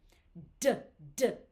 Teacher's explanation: my tongue goes to the top of my roof of my front teeth, at the top teeth. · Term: d sound